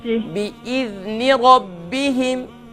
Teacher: Don't do قلقلة on the ذال. Make soft and control.